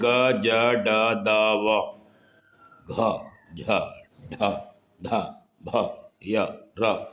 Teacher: सघोष व्यंजन वे होते हैं जिनमें आवाज़ भारी होती है, आवाज़ में कंपन होता है